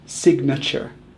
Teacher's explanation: Instead of the long A sound in nature, we actually use the schwa, which is kind of like a low U sound.